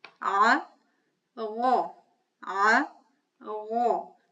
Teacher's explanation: So ayn is not heavy, but ghayn is heavy. The formation of ghayn is just like ayn.